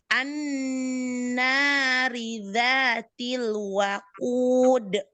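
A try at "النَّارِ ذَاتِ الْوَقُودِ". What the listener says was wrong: Kurang panjang mat arit lisukun ya. Waqud.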